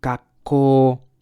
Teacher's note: We gotta follow the the vowels rule, so the O becomes longer. 学 校、 And this K is like gak.